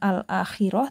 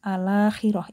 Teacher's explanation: Kalau nakal jadinya alakhirah gitu ya. Hamzahnya dibuang lalu harakatnya dipindah ke lam. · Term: naqal